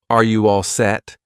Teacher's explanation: notice I don't push out that T, so set, all set.